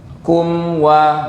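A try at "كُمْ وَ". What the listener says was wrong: Jadi tarik dulu kum wa. Jadi wawu itu bukan gini. Banyak orang ngucapin wawu gini Bapak. Wa, wa, wa, wa. Bukan wa, tapi wa. Ya, dimonyongkan.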